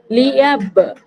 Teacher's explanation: লাম জেরলি, ইয়া বা জবর ইয়াব, বা এর উপর সাকিন রয়েছে, এটা হচ্ছে বা হচ্ছে কলকলার অক্ষর। তো এখানে এমন ভাবে পড়তে হবে যেন মাখরাজে ধাক্কা লেগে আলাদা হয়ে যায়, অর্থাৎ কলকলা করতে হবে। আর কলকলা মানে হচ্ছে প্রতিধ্বনি।